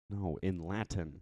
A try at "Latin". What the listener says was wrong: you gotta pronounce the T, man. You gotta pronounce the T.